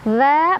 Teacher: Dha mad tabi'i karena ada fathah berdiri di atas huruf dzal, dibaca panjang 2 harokat.